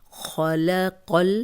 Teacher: قوف کو موٹا پڑھیں گے اور لام سے ملائیں گے، کیونکہ جزم پچھلے زیر زبر پیش والے حرف کے ساتھ ملا کے پڑھی جاتی ہے۔